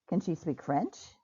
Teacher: My voice going up at the end lets my listener know that I've asked a yes or no question